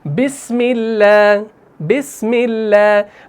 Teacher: तो अब यहां पर हम अल्लाह के नाम को मोटा नहीं पढ़ रहे बल्कि बारीक पढ़ रहे हैं